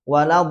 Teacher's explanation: itu ada sifat istidalah agak memanjang